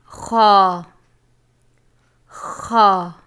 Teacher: حلق کے اوپر والے حصے سے ادا ہوتا ہے